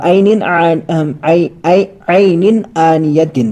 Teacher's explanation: عینن، اور یہاں پر دوبارہ سے اظہار کا قاعدہ ہوگا، کیونکہ تنوین آ رہی ہے، دو زیر کی تنوین آ رہی ہے اور آگے کیا ہے، حمزہ ہے، اسی لیے اظہار ہوگا۔ یہاں پر نون دو زیر نن پڑیں گے، ن نہیں پڑیں گے، آواز کو نہیں چھپائیں گے۔ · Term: اظہار حلقی